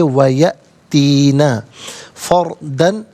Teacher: یا میں حمزہ ساکن ہے، جھٹکے کے ساتھ پڑھا جائے گا